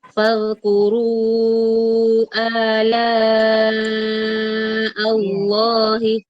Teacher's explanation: Di sini fadkuru panjangkan dulu 4 sampai 5, baru A-nya 2 harokat.